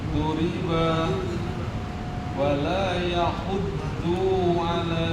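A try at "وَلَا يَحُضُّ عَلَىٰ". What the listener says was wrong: Bunyinya pendek. Wala yahuddu ala.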